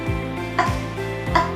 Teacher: Bunyi at adalah hambat tak bersuara. Karena setelah kita menghambat et kita tidak bersuara lagi.